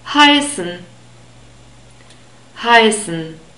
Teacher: So in this word the first syllable is stressed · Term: stressed syllable